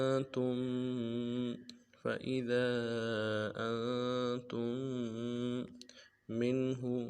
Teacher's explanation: نون ساکن کو غنہ کریں گے، تا کو میم ساکن کے ساتھ ملانا ہے، آگے منہو کی میم ساکن کے ساتھ ملانا ہے.